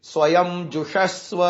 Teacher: जू के बाद जो श है वो मूर्धन्य श है, यानी प लिख करके बीच में जो डंडी लगाते हैं वो वाला श है।